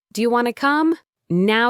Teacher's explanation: want to became wanna